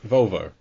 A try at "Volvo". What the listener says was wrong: Volvo? I hear that. That's how I hear it. But I hear you putting in a U.